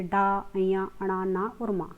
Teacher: इसके बाद आते हैं नासिक्य व्यंजन। नासिक्य व्यंजन होते हैं हर वर्ग के पांचवा वर्ण